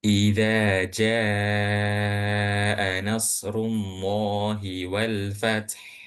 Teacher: Kemudian jim yang dibaca panjang ini atau jim alif ini bertemu dengan huruf hamzah dalam satu kalimat. maka jimnya ini tidak hanya dibaca 2 harokat, melainkan 4 sampai 5 harokat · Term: mad wajib muttasil